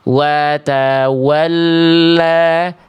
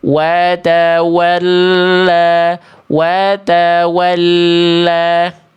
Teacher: Dua-duanya harus sama, jangan pilih kasih wau. Dua-duanya wau, maka dua-duanya dimuncungkan.